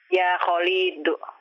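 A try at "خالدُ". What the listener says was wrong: Khalidun, panjang pendeknya ikuti saya. Lamnya jangan dipanjangkan.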